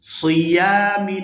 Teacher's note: یہاں یا کے ساتھ الف مدہ ہے تو اس کو بھی کھینچ کر ادا کیا جائے گا